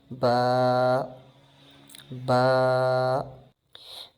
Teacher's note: ہونٹوں کا گیلا حصہ جب آپس میں ٹچ کرتا ہے تو با ادا ہوتا ہے